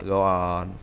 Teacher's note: tell someone that you do not believe what they just said spoken with a falling intonation